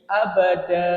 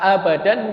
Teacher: Yang dimaksudnya pengganti ini ketika kita menghentikan bacaan pada yang berakhiran fathatain. Bunyi suara an diganti menjadi bunyi a. Panjangnya itu dua ya. Dua harokat. Mirip seperti mad tabi'i, huruf alif di belakangnya tidak lagi dibaca sebagai tanwin. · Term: mad iwad